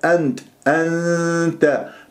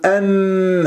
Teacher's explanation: إذن إخفاء أذهب إلى مخرج التاء